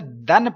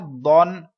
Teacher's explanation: لہٰذا میں نے کیا کرنا ہے، ان دونوں کی آواز کو آپس میں نہیں ملنے دینا. اس کو باریک آواز میں دال کو پڑھنا ہے، دود کو پر یعنی موٹی آواز میں پڑھنا